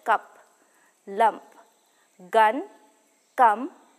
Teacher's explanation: the formation of this vowel can be described as a central unrounded vowel and we hear it in the following words such as cup